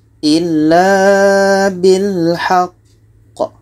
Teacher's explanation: Cara bacanya kita berhenti 2 detik. Setelah itu kita pantulkan qa-nya. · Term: qalqalah akbar